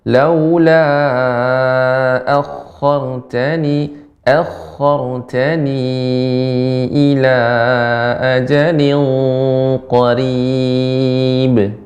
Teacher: pada kata akhartani di sini ada tasydid akhar dibaca dengan tebal.